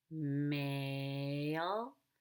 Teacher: I'm going to stretch out the vowel and connect the A to the L with a Y sound. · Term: smooth linking